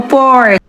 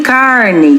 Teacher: com esse R bem puxado, chamado R retroflexo